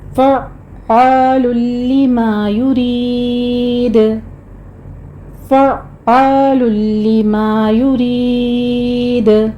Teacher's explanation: عین کو وسط حلق سے ادا کرنا ہے سختی کے ساتھ